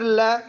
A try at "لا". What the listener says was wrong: لا. لام باریک پڑھو. لا. لا.